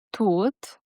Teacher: The hard T in tooth is a sharp puff of air. Your tongue tip hits right behind your teeth.